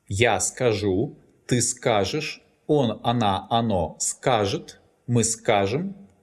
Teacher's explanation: The infinitive form is stressed on the last syllable. That's why this verb has variable stress.